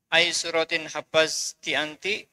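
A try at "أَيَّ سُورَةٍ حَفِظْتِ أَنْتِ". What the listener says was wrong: Ayya suratin. Nggak usah hafazti, tapi hafizti. Hafizti. Ayya suratin hafizti anti?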